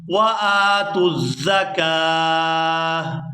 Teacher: یہاں کاف کو کھینچتے ہوئے ہا ساکن کے ساتھ ملائیں گے